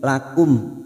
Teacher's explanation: mim sukun dibaca jelas tanpa mendengung